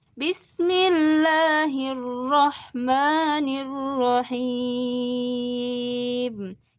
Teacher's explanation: awal tinggi, akhir turun.